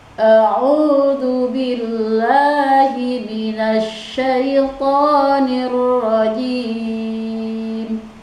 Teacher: ketika kita membaca mad asli hanya 2 ketukan, jangan terlalu panjang